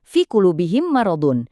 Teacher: Perhatikan gimana bibir kita tertahan rapat pas dibunyi mim.